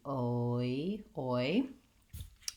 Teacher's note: In the dictionary, you'll see it as an aw and an e symbol together because we slide from aw to e. I really think of it as oi, more of an O shape to an E shape. So if you wanted to write it out that way, you could do oi, oi. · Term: diphthong oi